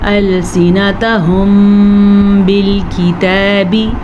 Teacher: میم ساکن کے بعد با ہے جو کہ اخفاء شفوی کا سبب بن رہا ہے تو دونوں ہونٹوں کو بند کر کے غنّہ کریں گے